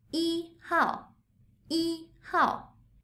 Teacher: It's an ordinal number, so 一 doesn't change its tone.